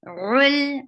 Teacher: ain from your throat very clearly